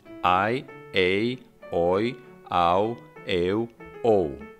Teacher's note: To finish with the Indo-European vowel system, we had diphthongs, composed by a, e or o as a first element, and e or u as a second element, in a combination of six diphthongs, I, a, oi, au, eu, o. In these diphthongs, the second element was always short. The first one could be short, but also long. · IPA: /ai/, /ei/, /oi/, /au/, /eu/, /ou/